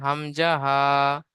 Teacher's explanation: হলকের বা কণ্ঠনালীর শুরু হতে উচ্চারিত হয় হামজা হা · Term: 1 নম্বর মাখরাজ